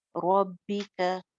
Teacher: रॉ मोटी हो जाएगी, बाद 2 दफा पढ़ेंगे क्योंकि शद है